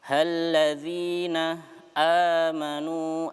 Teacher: Halladzina amanu a-nya panjang 2 harokat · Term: mad tabi'i